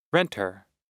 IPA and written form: ˈrentər (renter)